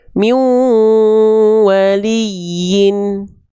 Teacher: Jadi ketika n-nya dileburkan ke ya didengungkan, masukkan ke hidung ya. · Jadi dileburkan, dimasukkan ke dalam rongga hidung. Ya, jadi bukan hanya asal lebur, asal tahan, tapi lebur tahan 2 harokat dengung, pakai dengung. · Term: idgum gunanya, idgham bigunah